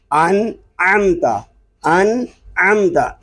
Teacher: عین حلق کے درمیان والے حصے سے ادا ہو رہا ہے اور حلق پر زور دے کر ہم عین کو ادا کریں گے